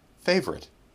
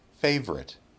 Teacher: my chin goes down twice that is an example of Ellipsis instead of reducing the vowel to uh we eliminate it all together